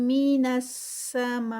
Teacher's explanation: مد متصل کنیکٹڈ مد ہے 4 کاؤنٹس پہ